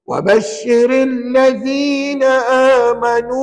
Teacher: ra kebetulannya dua-duanya baris bawah maka rnya nipis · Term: R nipis